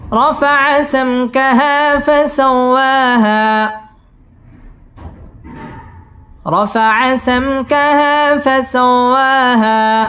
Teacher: সামকাহা মধ্যে তবাই ১ আলিফ টেনে পড়তে হবে। ফাসাও ওয়াও তাজদীদ ওয়ালা হরফ, ওয়াও ঠোঁট গোল করে উচ্চারণ করতে হবে। ওয়া মধ্যে তবাই ১ আলিফ টেনে পড়তে হবে।